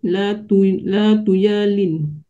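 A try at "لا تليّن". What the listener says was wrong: Hurufnya tertukar. La tulayin.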